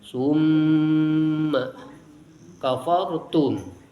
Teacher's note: Summa, ada mim musyaddad, mim bertasydid, hukumnya gunnah asliyah, mendengung ke hidung.